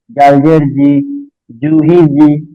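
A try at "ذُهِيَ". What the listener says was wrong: জালটা একটু নরম হবে আর জিমটা আর একটু শক্ত হবে।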